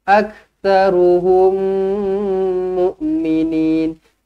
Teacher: Jumpa dengan mim sabdu. Terus rapatkan bibir. Dengungkan 2 harakat. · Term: idgham mislain